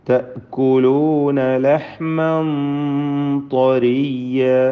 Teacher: തൻവീനിനെ ഇഖ്ഫാ ചെയ്ത് മറച്ച് മണിക്കുക. മണിക്കലിൽ തഫ്ഖീം വേണം, ശേഷം ത്വാ ഉണ്ട് എന്നതുകൊണ്ട്.